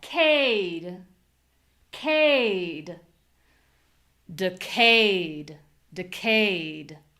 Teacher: Now, on the second syllable, we have high voice, long vowel, clear vowel.